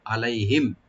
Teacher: লাই এখানে হরফে লিন, soft করে পড়বেন। আর মিম সাকিন এখানে আমরা ইজহার করব, এখানে গুন্না হবে না। আলাইহিম আর এখানে কোনো টান নাই এই শব্দে।